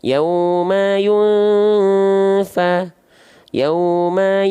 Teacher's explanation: maka ketika dilafalkan samar sebelum masuk ke huruf Fanya tahan samarnya dan dengungnya selama dua harakat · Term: ikhfa, 2 harokat kadar gunnah